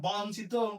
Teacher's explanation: এইযে এখানে ই থাকার কারণে এখানে যেই আছে তাহলে ব এর সাথে যে অ আছে এর উচ্চারণটা অ হবে না ও এর মত হবে।